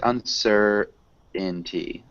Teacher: We almost swallow this T sound. So it sounds like uncertainty.